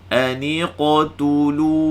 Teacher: Qalqalah tu mesti bunyi tebal. Sebab apa dia? Sebab qaf itu sifatnya isti'la. Jadi bunyi aniqtulu.